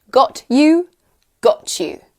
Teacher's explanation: and Y often sounds like ch